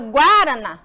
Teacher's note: Qual é a sílaba tônica professora é a mais forte e aqui ela tá na última e ela é oxítona